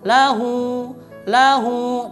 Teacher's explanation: Nah ini salah, karena lahu itu adalah mad silah qasirah, dibacanya cuma 2 harakat.